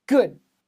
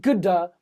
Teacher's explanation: There's a d sound there. There's the duh, but there's no vowel. We don't say ga. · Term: hard stop